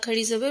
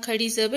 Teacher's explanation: ان کو ایک الف کے برابر لمبا کیا جاتا ہے، جھٹکا نہیں دیا جاتا۔